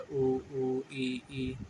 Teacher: जो हमारे संवृत होते हैं ऐसे स्वर जिन्हें बोलने में मुंह बंद ही रहता है